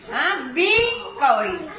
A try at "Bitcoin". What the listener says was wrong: Bit con la T, Bit!